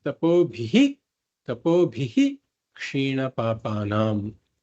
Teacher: whenever there is a visarga followed by a ksha, it is a full visarga.